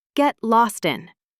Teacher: Notice how lost in blends together a little.